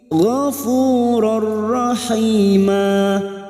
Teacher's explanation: dua huruf ini yaitu huruf lam dan huruf ro maka siap masuk pada huruf berikutnya huruf ro tanpa mendengung tanpa ditahan lama-lama hanya masuk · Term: idgam bila gunah